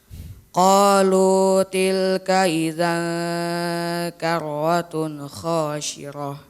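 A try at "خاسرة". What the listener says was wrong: khasirah, sin kecil.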